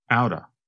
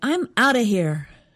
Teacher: I noticed they said out of quickly, so it almost sounds like one word